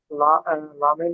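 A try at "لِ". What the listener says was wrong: টান দেওয়া চলবে না, হারাকাত তো। তাহলে শুধু লামজের লি, টান হবে না। হুম, আপনি মুখে যে কায়দাটা বলছেন সেটা সেইভাবে মানে সেটিং করতে হবে।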